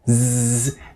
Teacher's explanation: you hear you also feel it in your finger so Z there is a little vibration you hear and feel on your fingers and that comes because the vocal cords are vibrating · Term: voiced